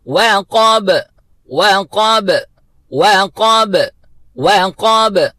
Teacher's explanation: با کو حرکت دینی ہے، قلقلہ کی آواز نکالنی ہے، ڈبل آواز نکالنی ہے، ایکھو ساؤنڈ جس کو کہتے ہیں، وہ ہم نے اس کے ساتھ ادا کرنا ہے۔